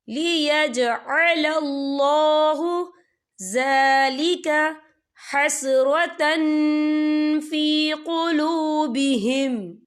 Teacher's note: اللہ کا نام پر پڑھا جائے گا کیونکہ اللہ کے نام سے پہلے زبر ہے